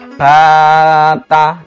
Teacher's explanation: Ada yang panjangnya ini adalah standar yang kita sebut sebagai mat tabi'i, biasanya dua ketukan.